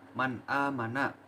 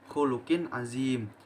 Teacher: maka nun mati dan tanwin ini dibaca jelas tanpa adanya dengungan ataupun samaran.